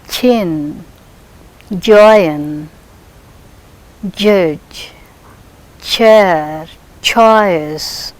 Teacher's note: Here we do not hear like p sudden release, but here slowly the air escapes slowly from the teeth ridge. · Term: palato-alveolar affricates